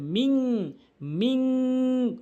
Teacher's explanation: একটি হলো মিম নুন জেরে মিন, অধিকাংশ লোক মিম নুন জেরে মিন বলে, এখানে গুন্না করে না, বলতে হবে মিং, মিং, নাকের ভিতর নিয়ে পড়তে হবে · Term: ইকফায়ে হাকিকি